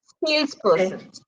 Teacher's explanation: sales चा sound जास्त आहे, person चा खाली आहे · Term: stress